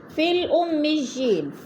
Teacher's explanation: فا کو لام کے ساتھ ملا کر پڑھیں گے، درمیان والا یا نہیں پڑھا جائے گا، کیونکہ اگر یا مدہ ہوتا تو پھر حرکت کے ساتھ مل کر پڑھا جاتا فا کے ساتھ۔